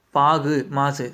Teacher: தன்னுடைய ஒரு மாத்திரை அளவிலிருந்து குறைந்து ஒலிக்கக்கூடிய உகரம் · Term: குற்றியல் உகரம்